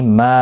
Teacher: ما الف مدہ ہے، ایک الف کی مقدار کے برابر کھینچ کر پڑھا جائے گا